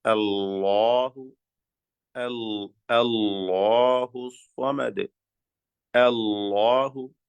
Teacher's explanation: ആ ലാമിന്റെ നേരിയ ശബ്ദത്തെ കടുത്ത കഠിനമായ തടിപ്പിച്ച ശബ്ദമാക്കി മാറ്റുക. അപ്പൊ എന്ത് സംഭവിക്കും? നാവിന്റെ പിൻവശം മേലേക്ക് ഉയരും. നാവിന്റെ പിൻവശം മേലേക്ക് ഇങ്ങനെ ഉയർന്നു വരും. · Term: തഫ്ഹീം